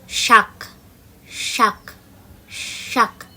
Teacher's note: যেটা আমাদের জিভটা তালুতে টাচ করে যে শটা বেরোয় সেটা হচ্ছে তালিবস্যের উচ্চারণ।